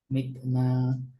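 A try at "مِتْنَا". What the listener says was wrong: মিথ, মিথ, বাতাসটা যেতে হবে, হ্যাঁ? একটা মিথ। হ্যাঁ, তায়ের বাতাসটা মিসিং হচ্ছে। টাংটা নিচেও টাচ খাচ্ছে যখন তুমি বাতাসটা বের করতে যাচ্ছ, টাংটা দাঁতে টাচ করতেছে, হ্যাঁ?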